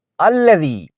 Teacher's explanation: الذی، یہاں یائے مدہ ہے، یائے ساکنہ اور پہلے کی زیر کی وجہ سے اسے ایک الف یعنی 2 حرکات کے برابر کھینچ کر پڑھیں، بشرطے کہ آگے ملا کر نہ پڑھ رہے ہوں۔